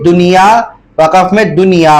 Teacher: نون ساکن کے بعد اگر حروف یرملون ایک ہی کلمے میں آ جائے تو وہاں اظہار مطلق ہوگا, یعنی بغیر غننے کے پڑھیں گے